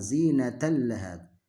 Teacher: Tanwin bertemu lam, maka dia tidak boleh didengungkan dan menghilangkan tanwinnya. Tanwinnya kita hilangkan, langsung masuk ke lamnya.